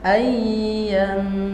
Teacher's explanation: Enggak, ianya pendek. ya-nya pendek, dengungnya yang panjang.